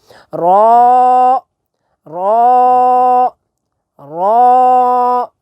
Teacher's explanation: را اسے آپ نے موٹا کر کے پڑھنا ہے، تھوڑا پر کر کے پڑھنا ہے. جیسے ہم نے قاف پڑھا تھا نا موٹا کر کے، اسی طرح ہم را جو ہے اسے بھی موٹا کر کے ادا کریں گے.